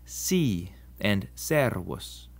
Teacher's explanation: The S is always pronounced like it is in the English soot and never like a Z as it is in rose